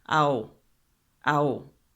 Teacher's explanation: And then we also have the additional union of sound here because the H is silent, so we have two vowels right next to each other